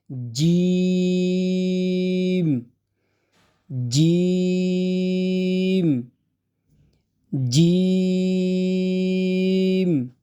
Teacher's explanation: জিহ্বার মাঝখানটা উপরের তালুর সাথে লাগিয়ে খুব চাপ দিয়ে তারপর উচ্চারণ হবে